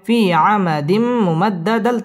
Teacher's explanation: জজম আলাইয়া মদের হরফ এক আলিফ টেনে পড়তে হবে ফি আমাদিম তানবিনের বামে মিম আসছে ইদগামে বা গুন্না গুন্না সহ মিলিয়ে পড়তে হবে